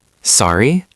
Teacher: If you didn't hear what someone said, you can just say, sorry, with a rising tone at the end, like a question